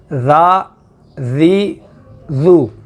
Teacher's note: زبان کو اوپر والے دانتوں کے ساتھ لگایا ہے اس کی نوک کو، تو تب اس کی ذال کی آواز بنی ہے